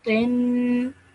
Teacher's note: Over here, this is a vowel madda, so you stretch that lu sound out for 2 seconds. Then ta has a tanween underneath it, so it's nasal sound for 2 seconds.